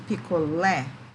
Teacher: Oxítona, porque a última sílaba é a sílaba tônica.